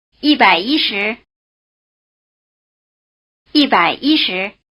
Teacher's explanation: Notice that when yī modifies the tens it doesn't change tone.